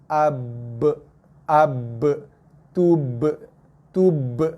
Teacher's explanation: Cuma ba, dia mesti keluar daripada tekanan kedua bibir. Bibir kena tekan kacip, lepas keluar ba.